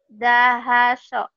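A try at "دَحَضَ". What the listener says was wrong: Zahado. Jangan lupa ini bukan so, ini do, ada titiknya. Zahado.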